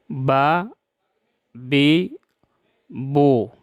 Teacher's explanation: دونوں ہونٹوں کے طری حصے سے با ادا ہوتا ہے